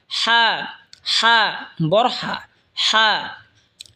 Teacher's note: হা হলকের মধ্যখান হয়তো উচ্চারণ হবে হা।